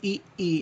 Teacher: इस स्वर के उच्चारण में मुख द्वार लगभग बंद रहता है। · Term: संवृत स्वर